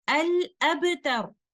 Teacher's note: But if the end of a word is a vowel or mutaharrik letter and the reciter puts a temporary sukoon on the last letter to facilitate the stop, and that stop or waqf is free of raum and ishmam, that inshallah we will discuss soon, then in that case, this is called waqf بالسكون المحض or stopping with a pure sukoon.